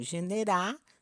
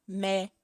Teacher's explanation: a supressão de fonemas, principalmente o L e o R no final das palavras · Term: apócope